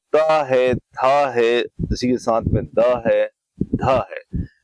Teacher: तो यहां पर यदि हम बात करें त वर्ग की और त वर्ग के अंतर्गत यदि हम देखें तो इसमें हमारा जो त है थ है इसी के साथ में द है ध है ये वर्ण आते हैं और ये वर्ण जब हम बोलते हैं तो हमारी जो जीभ होती है वो आगे के हमारे सामने के जो दांत होते हैं उनसे टकराती है